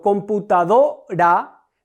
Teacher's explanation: en la sílaba do recargo la voz, esa sería mi sílaba tónica. El resto de las sílabas son átonas.